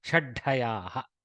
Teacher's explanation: it's somewhat like a dvitva of the dakara followed by a ha attached to the second dakara to make it mahaprana dakara